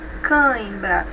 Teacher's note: Nós não temos aqui mais uma vogal oral, não. Ela é nasal. Cãibra. E nós temos primeiro a vogal e depois a semivogal.